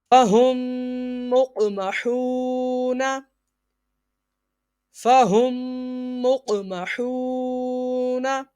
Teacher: میم ساکن کے بعد دوسری میم آ گئی ہے تو ادغام شفوی یعنی غنہ ہوگا